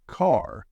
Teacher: British accent tends to soften the R